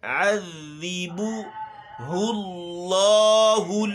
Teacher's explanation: ہونٹ گول ہیں، پھر لام میں ہم نے چھوڑ دیا اور پھر ہل میں دوبارہ گول کیے